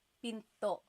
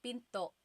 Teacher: Do you hear the glottal stop when I say pinto? Pinto. So it's not pinto.